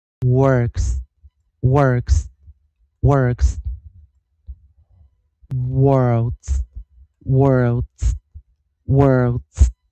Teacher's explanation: 如果是▁W▁是▁OR，▁它就是念长儿音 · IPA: [ɜ˞ks]